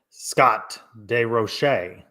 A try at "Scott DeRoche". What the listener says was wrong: he said roll the R. I didn't hear.